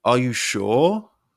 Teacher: the word sure is held before your voice Rises at the end making it sound like a question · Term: held inflection